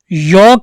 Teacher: तो य का जो उच्चारण स्थान है वो तालु।